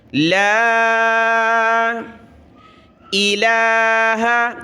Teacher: لام کے اوپر کھڑا زبر ہے، 1 الف کی مقدار ہم نے کھینچا